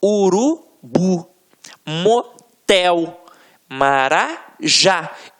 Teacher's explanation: na hora da pronúncia de forma mais aguçada você vai perceber que realmente a pronúncia da última sílaba ficará mais forte